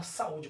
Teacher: Quando eu faço a separação silábrica, observe que o U se separa da outra vogal, que no caso é o a, e passa a ser acentuada e passa a ser pronunciada de maneira mais forte e mais intensa. Passa também ser a sílaba tônica, né? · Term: iato